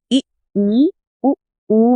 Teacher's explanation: ई, उ में मुंह लगभग बंद रहता है तो ये संवृत या क्लोज्ड है।